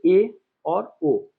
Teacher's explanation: ए और ओ मतलब आधा बंद रहता है आधा खुला रहता है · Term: अर्ध समृत स्वर